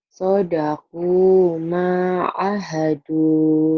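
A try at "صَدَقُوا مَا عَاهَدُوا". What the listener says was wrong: Kan maknya juga panjang, Neng.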